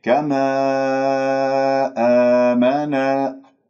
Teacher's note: آمنا ألف ساكن قبل همزة مفتوح مد بدل بمقدار حركتين